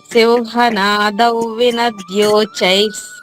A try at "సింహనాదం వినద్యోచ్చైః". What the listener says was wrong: చై కదమ్మా, చై. ఆ 2 చాలు ఉన్నాయి కదా. వినద్యోచైస్ అచ్చ అంటాం కదా, అలాగా